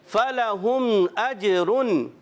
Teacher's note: اجرن پہ جیم حرف قلقلہ سے ہے، قلقلہ ادا کریں گے، آواز لوٹ کر آئے گی